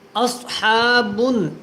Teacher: صاد کو موٹا پڑھنا ہے اور بن یہاں پہ غنہ کریں